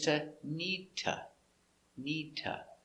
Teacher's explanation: need to changes to neeta